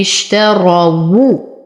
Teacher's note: أصبر على الشين أعطيها صفة التفشي اشترى، أفخم الراء لأنها مفتوحة